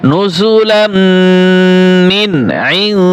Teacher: আইন এইখানে গুণ হবে আর মিন গুণ হবে না